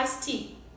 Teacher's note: No caso do iced, ele termina com som de T. E o T também começa com som de T. Então a gente só fala um, iced tea. Aí tem gente que fala, ai, mas teacher, ice não fica ice mesmo? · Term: linking